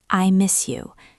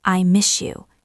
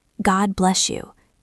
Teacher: When a word ends in S and the next word starts with a Y like you, the S often turns into a sh sound like shoe.